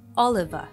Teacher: Off is reduced to of and is linked to another schwa sound. So we hear Oliver. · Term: connected speech